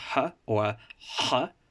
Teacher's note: a voiceless pharyngeal fricative, so like a h but slightly further up in the throat